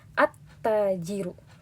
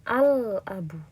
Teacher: maka lamnya ini kita tiadakan cara membacanya. Jadi ketika membaca, kita seakan-akan langsung masuk ke huruf ta-nya. Jadi at-tajiru.